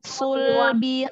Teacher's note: sunya tebal, lamnya tipis.